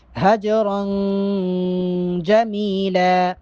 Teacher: حجرن، جیم چونکہ ساکن ہے جیم پہ کلکلا کریں گے، اور را دو زبر تنوین ہے یہاں پر اخفا کریں گے